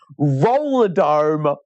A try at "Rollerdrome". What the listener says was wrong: you're missing an R in the name. It's actually Roller Drome. So just think Ninja Turtles, like the Technodrome.